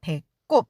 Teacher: 된소리 발음 목을 짜듯이 목을 눌러서내는 소리입니다